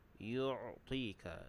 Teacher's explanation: Yu'ti, huruf ain makhrajnya di tengah kerongkong, yu'tika. Kemudian ti kita panjang 2 harakat, mad asli, dan juga ta tu ditebalkan, yu'tika.